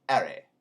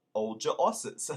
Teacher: leave off the h's in the beginning of the words